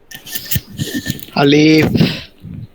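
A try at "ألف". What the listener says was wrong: আলিফ টান দেওয়া যাবে না, ঠিক আছে? আলিফ। তই না, এই যে এটাই বলছিলাম, ত। ত, তই না, ঠিক আছে? ত।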